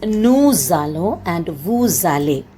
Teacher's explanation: a noun ends with a consonant, and the next vowel, when it starts with a vowel, then it changes its sound to z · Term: liaison